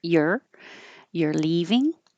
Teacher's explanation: instead of a perfect your, you can not round your lips and make it a little lazier.